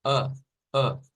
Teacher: es un sonido central eh Es decir la lengua Está quieta usted no la va a mover la lengua está como en reposo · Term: chua